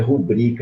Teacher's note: O nome é rubrica, é uma paroxítona e não uma proparoxítona.